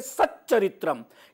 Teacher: सत चरित्रम यानी सत के त को च हो गया है